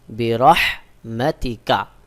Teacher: এখানে যে হা রয়েছে এটা হলকের মধ্যখান থেকে উচ্চারণ হবে